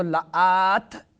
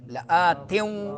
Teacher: ادغام ہوگا مال غنہ، ناک میں آواز بھی لے جانی ہے